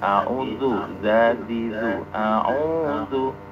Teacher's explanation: Coba dalnya pakai zal, jangan pakai dal.